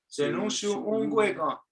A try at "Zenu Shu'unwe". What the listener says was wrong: Zenu Shu'unwe, Zenu Shu'unwe. Okay, take the K out. Take the K out.